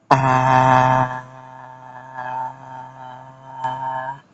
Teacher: a is a monophthong. That's a pure, true vowel. Ah. You can sustain it until you run out of breath. · you can sustain it for several seconds and it stays the same from beginning to end